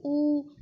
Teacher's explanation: जैसे ऊ, इसमें आप देखो ऊ से होंठों की शेप जो है गोलाई में आ जाती है, ऊ, इसमें होंठों का काम है।